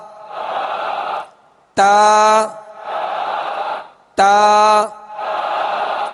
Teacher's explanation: مخارج کی لسٹ میں آپ تا کا مخرج دیکھ لیجئے، اور اس مخرج سے یعنی زبان کی نوک اور اوپر کے دانتوں کی جڑ